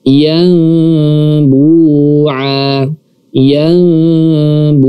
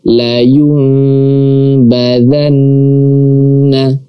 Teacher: nun mati atau tanwin bertemu dengan huruf ba, maka kita membacanya secara memberikan celah di antara dua bibir. Jadi berbeda dengan cara yang pertama. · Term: furja